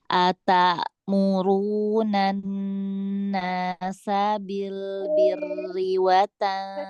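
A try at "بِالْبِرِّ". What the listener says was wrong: Rohnya tipis. tipis. tipis aja. Tipis jangan panjang satu harokat aja.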